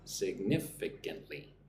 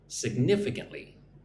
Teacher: Put the emphasis on the second syllable.